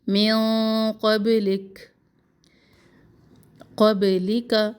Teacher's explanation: انزل، نون پر اخفا. نون پر یہاں پر موٹا اخفا ہے، ٹھیک ہے، کیونکہ قوف موٹے حروف میں سے ہے تو نون موٹے اخفا پر ہماری زبان کی جڑیں بھی اوپر کو اٹھیں گی. من قبلک، قبلک کا زبر کو لمبا نہ کرے.